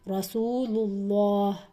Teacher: اللہ کا لام میں نے موٹا پڑھا کیونکہ پچھلے حرف لام پر پیش ہے، یعنی اوپر والی حرکت ہے، اس وجہ سے رسول اللہ.